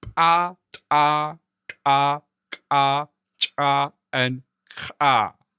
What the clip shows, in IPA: p' t' ʈ' k' tɕ' and x'